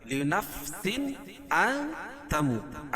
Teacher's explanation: حمزہ ہے، تو یہاں ظاہر کر کے پڑھیں گے لنفس ان تموت۔ ان تموت میں اخفا حقیقی، کیونکہ نون ساکن کے بعد حروف اخفا کے 15 حرفوں میں سے تا ہے، تو یہاں ناک میں آواز کو چھپا کر پڑھیں گے